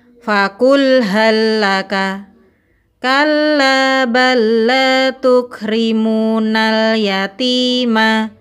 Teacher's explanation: Pertemuan dua huruf yang sama makhraj dan sifatnya, di mana huruf yang pertama sukun, sedangkan huruf kedua berharokat. Maka cara membacanya, huruf pertama dimasukkan ke dalam huruf kedua, dibaca tanpa gunnah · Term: idgham mutamathilain